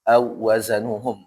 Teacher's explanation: Kayak waw ya, waw bertasydid maka jangan lama-lama.